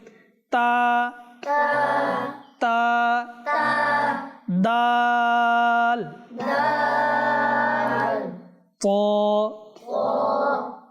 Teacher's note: জিহবার মাথা উপরের দাঁতের গোড়া থেকে উচ্চারিত হয় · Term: হরুফে নিতিয়া